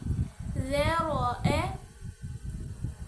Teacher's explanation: ذیل کا مخرج وہی ہے کہ دانتوں کے درمیان میں سے زبان باہر نکلی ہوئی نظر آنی چاہیے تھوڑی سی۔